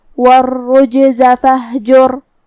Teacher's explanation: کلمت والرجز میں حرف الرا پہ تشدید ہے لہذا 2 حرف کے برابر ہمیں را کو پڑھنا ہے اور جو کہ تشدید پیش کا ہے تو را کا حکم ہے تفخیم.